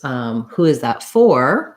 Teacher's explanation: where the word for is stressed, then I'm going to use the clear or vowel